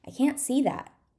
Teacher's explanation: So we're stressing both can't and see.